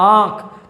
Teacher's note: मुंह से भी हवा निकल रहा है और नाक से भी निकल रहा है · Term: अनुनासिक